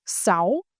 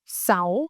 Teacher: In the north, the S sound pronounced clearly.